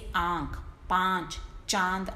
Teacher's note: इन ध्वनियों में श्वास वायु, मतलब जो हम सांस लेते, जो हमारी बोलते समय जो हवा है, मुंह और नाक दोनों से एक साथ निकलती है। इसे दर्शाने के लिए चंद्र बिंदु का चिन्ह लगाया जाता है, जैसे आंख, पांच, चांद आदि। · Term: अनुनासिक